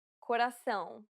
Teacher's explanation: it is similar to the ow sound in English but with nasality saying the word pound repeatedly May sometimes help with pronouncing this